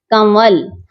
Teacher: ہم اس نام میں نون کی آواز کو ناک میں چھپا رہے ہیں، چھپا کر پڑھتے ہیں. · نون کی آواز کو صرف ناک میں لے جاتے ہیں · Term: اخفا